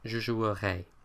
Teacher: Je jouerai, I will play, has an A sound at the end, almost like an E with an acute accent.